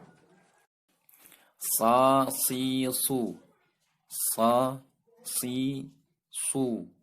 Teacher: Makhraj huruf sa adalah ujung lidah menghadap dan mendekat di antara gigi seri atas dan bawah